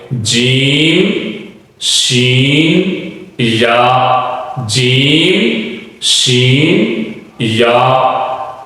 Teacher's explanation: زبان کا جو درمیانی حصہ ہے وہ اوپر والے تالوں سے ٹکرائے گا تو 3 حروف ادا ہوں گے